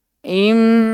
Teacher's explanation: Itu gunnah namanya. Bunyi yang keluar dari hidung.